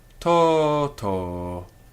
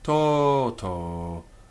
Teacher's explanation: Each syllable is heavy. It has a long vowel, long by nature